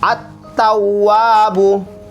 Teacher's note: Alif sama lamnya tidak dibaca lagi, langsung masuk di ta. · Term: idgham syamsiah